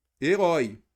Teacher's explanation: a última tônica é um ditongo aberto